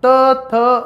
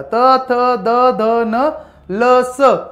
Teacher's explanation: जे वर्ण उच्चारताना आपल्या जिभेचे टोक वरच्या दाताच्या मागील बाजूस टेकते त्यांना आपण दंत्यवर्ण म्हणतो. म्हणजे ज्यावेळेस तुम्ही उच्चार करणार तुम्हाला जी जीभ आहे ती दाताला लावा लागणार आहे.